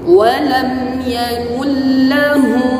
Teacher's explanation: jangan didengungkan pada pertemuan nun sukun dengan lam. Walam yakul lahu, jangan walam yakul lahu, tidak dengungkan. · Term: bila gunnah